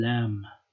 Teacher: I'm saying it like English L, but it's actually not that velarized probably